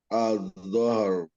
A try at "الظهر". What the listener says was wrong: Don't try to pronounce the lam at all. You don't have to raise it twice. Just once. It's just an emphasis.